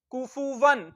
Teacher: तो वाव दो जबर वन, या वाव दो जबर वन, इसको यूं भी लिख सकते हैं, यानी इसमें नून है वाव दो जबर वन, वाव जबर नून वन, कुफुवन। तो तनवीन में नून साकिन की आवाज आती है।